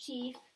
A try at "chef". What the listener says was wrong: Oh, that's just, let's try the short vowel.